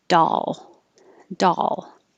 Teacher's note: you have to open a lot for the ah, but your tongue still needs to reach the L and hold it in the L position a little longer and make noise so you can hear the L.